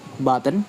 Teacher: The word button isn't pronounced button, but in natural speech it becomes button. The N forms its own syllables.